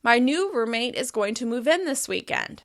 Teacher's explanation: As you can hear, I'm stressing in.